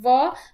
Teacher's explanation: तो वकार का उच्चारण स्थान दंत ओष्ठ, अर्थात व जब हम बोलते हैं व, तो जो हमारे दांत हैं वो हमारे होठ का स्पर्श करते हैं, तो इसलिए उसका उच्चारण स्थान 2 प्रकार का हो गया, दंत भी हो गया और ओष्ठ भी हो गया।